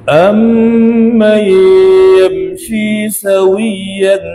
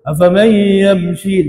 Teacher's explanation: riwayat Hafs dia baca dengan idgham al-gunnah dengung, riwayat Khalaf dia tak baca dengan dengung, dia baca afaman yamshi, dia baca begitu je idgham tapi tak ada dengung ya, kita kena jaga-jaga.